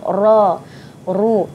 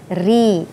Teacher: Ra ditebalkan bila baris atas, secara umumnya bila baris atas dan baris hadapan kita sebut ra, ru, tapi baris bawah dia jadi nipis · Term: hukum bacaan ra